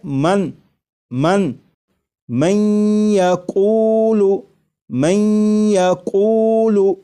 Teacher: یہ نون ساکن کا یا میں ادغام بھی ہو رہا ہے، اور ادغام اس طرح ہو رہا ہے کہ غنہ کے ساتھ